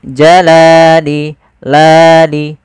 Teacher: Panjangnya adalah 2 harokat. Yaitu kita memanjangkan lamnya. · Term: mad tabi'i